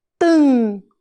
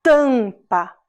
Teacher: o M perto da vogal, no final da sílaba, também faz o som nasal